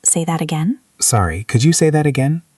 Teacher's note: The intonation goes up at the end. It is a question.